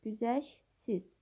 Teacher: Sözün düzgün tələffüzü güzəş siz şəklində olur. T samiti tələffüz zamanı düşür. Güzəşsiz. Sözdəki səs düşümü şəkilçinin tərkibindədir.